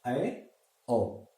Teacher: विवृत से थोड़ा कम इसमें मुंह खुलता है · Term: अर्धविवृत